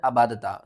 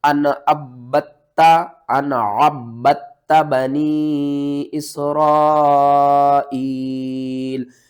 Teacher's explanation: یہاں پر کیا کرنا ہے؟ عین کو با کے ساتھ ملانا ہے اور پھر اس با کو تا کے ساتھ ملانا ہے · عین کو با کے ساتھ ملانا ہے اور پھر اس با کو تا کے ساتھ ملانا ہے، با کے اوپر سختی کرنی ہے، تا کے اوپر بھی سختی کرنی ہے، تا کو بھی دو بار پڑھنا ہے اور با کو بھی دو بار پڑھنا ہے